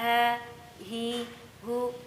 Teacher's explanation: Adapun cara melafalkan huruf H diantaranya, pertama yang harus diperhatikan adalah H ketika kita melafazkan H, hi, hu, di situ terdapat suara yang beriringan dengan nafas, atau H ketika dilafazkan nafasnya harus dikeluarkan. Mengapa? Karena salah satu sifat di dalam ilmu tajwid yang dimiliki oleh huruf H itu sendiri adalah namanya sifat hams. · H itu dikeluarkan melalui tenggorokan yang bagian bawah, yang paling bawah. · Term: huruf ha